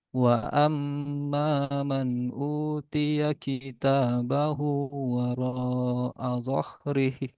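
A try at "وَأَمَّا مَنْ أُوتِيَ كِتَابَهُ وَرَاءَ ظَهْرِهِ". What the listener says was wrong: Roknya kurang panjang ya, 4 harokat sama kurang tebal juga.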